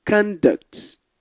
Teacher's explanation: When you stress the first part of the word, conduct, it's a noun.